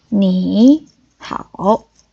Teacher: the first third tone is pronounced as a second tone, but the tone mark doesn't change.